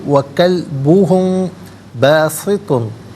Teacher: میم ساکن کے بعد با ہے تو میم ساکن کو غنّے کے ساتھ پڑھیں گے